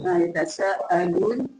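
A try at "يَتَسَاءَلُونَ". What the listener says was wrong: Yeah, just if you say then you are adding harfu mad here. Yatasaa. You are giving it a mad.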